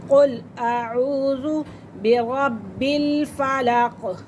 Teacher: را کو پر کریں گے اور یہ با مشدد ہے